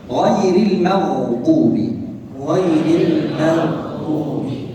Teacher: Kalimat maghdub itu huruf ghain itu dibaca dengan mufakham. لأن عليها فتحة، والحرف المفخم حينما يكون عليه فتحة يأخذ الدرجة الثانية في التفخيم.